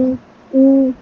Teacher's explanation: वाओ दोनों होठों को गोल करने से अदा होता है। यानी कि होठों को मुकम्मल तौर पर बंद नहीं किया जाएगा बल्कि नातमा गोलाई होगी। थोड़ी सी होठ ऊ ऊ इस तरह आप होठों को सीटी वाले अंदाज में करें।